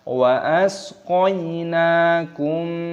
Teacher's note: Ada ya sukun dibaca qoina, nunnya dibaca panjang, mimnya ketemu dengan mim, ini dibaca idgham mimi, didengungkan. Wa asqainakum, didengungkan karena ada mim sukun yang bertemu dengan mim, ini hukumnya dibaca idgham mimi ataupun idgham mithli, dipanjangkan, didengungkan.